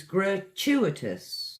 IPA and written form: ɡrəˈtjuːɪtəs (gratuitous)